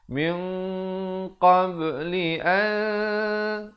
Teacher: ikhfa 2 harakat dibacakan dengan tebal kerana qaf merupakan huruf isti'la. Jadi dia baca min bukan ming.